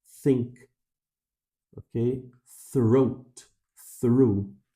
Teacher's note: No th do inglês não. A língua está entre os dentes, ó. E o som só sai se os lábios estiverem separados, ó.